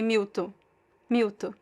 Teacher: people just drop the N the nasal sound